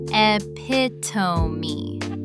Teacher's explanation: But it's actually pronounced epitome. 4 syllables, and that final E is not silent at all. So the one time you'd expect a silent E, it just isn't silent.